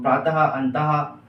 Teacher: ये जो विसर्ग है इसका जो उपयोग होता है वो हा के रूप में जाके निकलता है